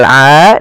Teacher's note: Kemudian pada kata "a," terdapat Madd Thabi'i yang ditandai dengan fathah diikuti alif, dengan panjang dua harakat